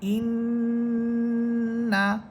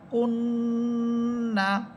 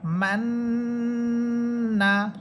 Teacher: তাহলে গুণনাটা কিভাবে হবে? আমরা যখন হামসা নুনকে গিয়ে ধরবে, ওই ধরার অবস্থায় আওয়াজটাকে আমরা নাকের ভিতরে নিয়ে গুনগুনিয়ে পড়ব